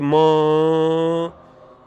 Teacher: You have air coming through the both oral and nasal passage. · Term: nasal sounds